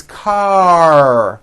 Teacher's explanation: your tongue has to pull back car and also your lips close a little bit in the front the r needs to be very strong and you need to